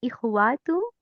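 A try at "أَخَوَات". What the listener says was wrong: अखवात, इसको याद करें ना आप लोग। इखवात क्यों बोलते हैं? आप जेर नहीं लगानी, यहाँ पे जबर लगानी है, ये उख्तुन से बना हुआ है।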